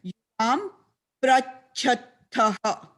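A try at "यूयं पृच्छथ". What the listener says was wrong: Not prachataha, it is prichataha. It is not not ukara. It is cerebral, not labial. The vowel is cerebral. Pakara and rikara. Chati, prichataha.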